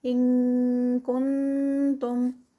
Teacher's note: ان کنتم یہاں پر اخفا ہے اور کاف کی ساؤنڈ آئے گی اس میں